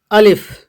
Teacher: الف کو جلدی پڑھنا ہے، بالکل بھی نہیں کھینچنا ہے